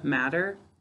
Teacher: sometimes we make that t sound a little bit like a d, matter, and then we're going to spell it incorrectly.